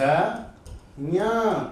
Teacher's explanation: ञ का नाम लेते हैं, नाक से भी आवाज आएगी ना